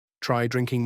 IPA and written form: traɪ ˈdrɪŋ.kɪŋ (Try + -ing)